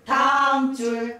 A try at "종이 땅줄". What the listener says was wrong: 땅이 네 박자야 돼. 종이 땅줄.